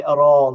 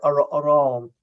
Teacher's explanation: So the reason that in Kerry Irish, we say aran, like a shaw pale, was we put the aran we put the stress on the second syllable because of the Norman influence